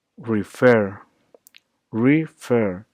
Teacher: The emphasis and tone is on fer